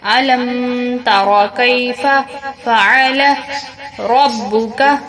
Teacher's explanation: میم کے بعد گنہ کریں گے کیونکہ آگے تا ہے اور میم ساکن ہے